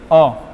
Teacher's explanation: जैसे कि अ, ठीक है, क्या हो गया अ हो गया, मतलब कि आ की अपेक्षा कम जो है मुख खुल रहा है